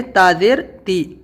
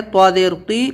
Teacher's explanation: یہاں پر ہے طا زیر قی اور یہ ہے تا زیر تی. زبان دونوں کی ایک ہی جگہ لگے گی دانتوں کی جڑ میں اوپر والے، لیکن یہاں پہ تی پتلا بولیں گے، یہاں پہ قی موٹا بولیں گے منہ بھر کے